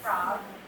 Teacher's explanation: If you're saying frog, teeth are down on your lip